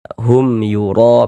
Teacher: dibaca jelas bunyi mim sukunnya kemudian tidak didengungkan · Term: izhar syafawi